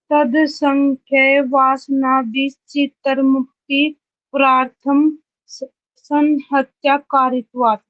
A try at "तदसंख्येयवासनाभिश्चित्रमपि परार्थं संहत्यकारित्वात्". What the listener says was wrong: ठीक है।